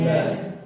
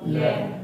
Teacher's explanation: जिन व्यंजनों का उच्चारण करने पर जिह्वा तो स्थिर रहती है और श्वास वायु दोनों भागों से यानी दोनों बगलों से निकल जाती है, उन्हें हम पार्श्विक व्यंजन कहते हैं।